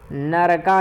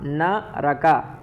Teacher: नरका नहीं करना है, न रका, रा का पूर्ण उच्चारण करना है